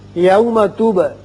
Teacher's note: با چونکہ ساکن ہے اس لیے اس کی صفت قلقلہ ادا کریں گے. را کے اوپر زبر ہے اس کو پر پڑھیں گے.